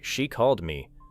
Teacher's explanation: The final D in called may connect with me, making the phrase sound like she called me.